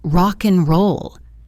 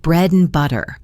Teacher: The d sound in and is also frequently dropped especially when it comes before another consonant.